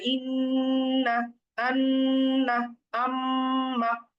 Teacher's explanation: এটা আমরা জানি যে নাকের মধ্যে গুন্নার উচ্চারণ করতে হয় ইন্না, আন্না, আম্মা, এবং গুন্নার সময় একালিপ টেনে ধরে রাখতে হয়।